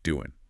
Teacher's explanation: doing often loses that final G sound becoming doing.